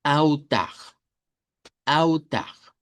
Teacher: en portugués la L se convierte en una U corta o una W, dependiendo de cómo lo querramos pronunciar.